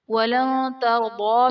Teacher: نون ساکن کے بعد حروف اخفاء میں سے تا آ رہا ہے تو یہاں پر اخفاء کا قاعدہ ہوگا، یعنی نون ساکن میں ہم غنہ کر کے پڑھیں گے۔